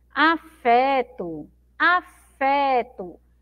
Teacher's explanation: a sílaba mais forte é o fé